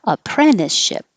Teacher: You can say the T, apprenticeship, but you can drop the T because it's after the N in the unstressed syllable